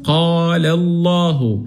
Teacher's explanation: اللام في اسم الجلالة إذا سبقت بفتح بنفخمها